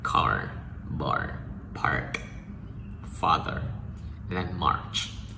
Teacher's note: Nên là đầu lưỡi cong lên, khoan miệng rộng ra. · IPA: /a:/